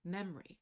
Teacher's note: in the the difference between the spelling and the pronunciation of the word memory where the O is no longer typically pronounced